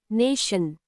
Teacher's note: That shan ending is where the schwa, schwa sound appears.